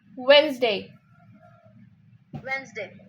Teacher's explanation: Yeah, the D is cancelled and it comes Wednesday